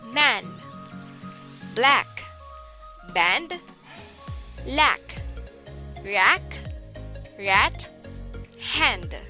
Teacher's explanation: teeth the production of this sound requires stretching of the tongue lips are more spread than in the rest position the production of the sound requires a large opening jaw this vowel not sound natural unless the jaw drops as needed · Sound A is a near open front unrounded vowel, as in man.